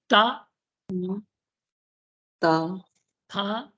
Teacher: देखो दांत में स्पर्श होगी जिह्वा का अग्रभाग। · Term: दंत्य ध्वनि